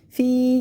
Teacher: یا ساکن سے پہلے زیر، یا مدہ، اس کو ہم نے کھینچ لیا، الف برابر